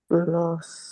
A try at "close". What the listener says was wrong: Close. It's not an S. It looks like an S, but when you pronounce it, Z. Close. Sounds like a Z. That's why it's in the D column. Because it's spelled with an S, but it's not pronounced like an S. It's pronounced like Z.